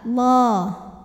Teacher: lam jalalahnya dibaca secara tafkhim, sebab huruf sebelumnya berbaris dhammah, maka dibacanya tebal, Allah. Kemudian alif lamnya dinamakan dengan alif lam syamsiyah, karena alif lam menghadapi huruf syamsiyah yaitu lam, maka alif lam tidak dibaca.